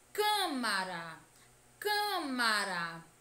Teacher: também que a pronúncia dessa sílaba deve ser fechada Câmara Câmara a pronúncia da sílaba tônica deve ser fechada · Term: som fechado